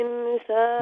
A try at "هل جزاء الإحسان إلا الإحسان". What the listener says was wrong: नहीं इंसान नहीं अलिफ और हा إحساني Again, please, halke khol diba.